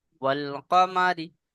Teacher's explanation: মা টান দিচ্ছেন, মা টান হবে না, মিমের উপরে জবর আছে, হারাকাত।